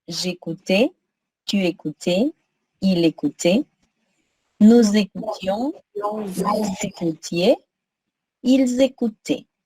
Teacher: les trois premières et la dernière sonnent de la même façon.